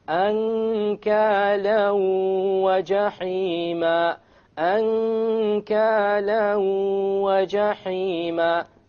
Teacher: You merge the tanween along with the waw and you move on. You don't pronounce the end sound and you have a ghunna.